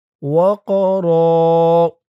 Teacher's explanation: ওয়াফি আযানিহিম ওয়াকরা ওয়াও দিয়ে কফ ধরবে। কফটা কলকলার হরফ, ধাক্কা দিয়ে পড়তে হবে।